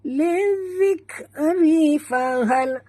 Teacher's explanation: Okey, dekat zal sini ada tasydid, jadi kita tekan lizik dan bunyikan hamas pada huruf kaf yang mati